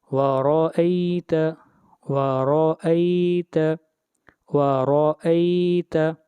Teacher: پیچھے ہم نے ایک رول پڑھا تھا کہ را کے اوپر جب پیش یا زبر ہوگی تو را کو موٹا پڑھیں گے اور جب زیر ہوگی تو را کو باریک پڑھیں گے. یہاں پر را کے اوپر زبر آئی ہے اس لیے را کو موٹا پڑھیں گے